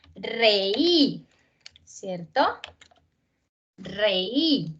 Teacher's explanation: reí que tiene la fuerza acá en la vocal débil